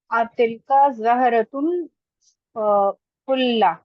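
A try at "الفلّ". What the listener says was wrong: जेर है फुल्ली।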